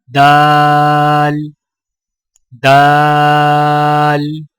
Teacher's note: دال کی ادائیگی میں زبان کی نوک کو سامنے والے اوپر کے 2 دانتوں کی جڑ سے لگا کر باریک آواز میں پڑھیں، یعنی دال دال۔